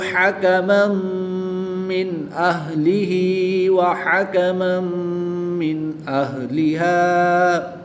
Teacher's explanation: 2 زبر کی تنوین کے بعد میم حروف معلوم میں سے ہے تو یہاں پر ادغام مع الغنہ ہوگا، غنہ کر کے پڑھیں گے